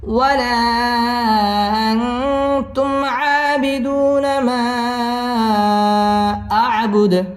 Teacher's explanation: ওয়াও ঠোঁট গোল করে উচ্চারণ করতে হবে। ওয়ালা মধ্যে মুনফাসিল 3 আলিফ টেনে পড়তে হবে।